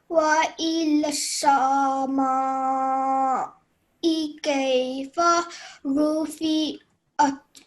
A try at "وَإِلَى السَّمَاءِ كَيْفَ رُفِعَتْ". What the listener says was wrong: Okay, so this is wa ilassa. Okay, so please don't say wa ilasama. This would wa ilassa. Okay, so when you're letting go of the sa sound, you're not stretching for more than 1 second. Okay, so that's the rule that we must follow.